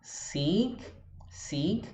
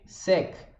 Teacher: Vai tentando. Depois tem o I, que é bem longo, com a boca aberta lateralmente, e o E, que a boca cai um pouquinho para baixo, verticalmente. Então a gente tem seek, seek, que é diferente de sec.